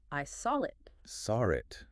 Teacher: I hear that little R sound creeping in. Mm-hmm. It's not written there, but it helps bridge the saw and the it. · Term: intrusion